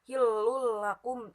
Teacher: tanwin bertemu lam itu idgham bila guna